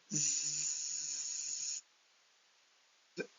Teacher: So the hissing sound sound the hissing sound is this hissing sound is voiceless because the vocal cords are open, the air passes without any vibration. Here the buzzing sound zzz, is voiced sound because the vocal cords rapidly close and open. So it causes the pressure causes vibration.